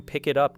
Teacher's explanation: move naturally toward the vowel at the beginning of it, and the final T of it then connects with the vowel in up, creating one smooth phrase without deleting the consonants that identify the words. The result is not three isolated words